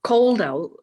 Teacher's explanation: you don't even pronounce the d